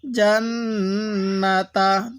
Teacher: এই নুনের মধ্যে গুন্না করব তবে টান দিব না অনেকে আমরা এই নুনের মধ্যে টান দিয়ে থাকি কারণ মিমে নুনে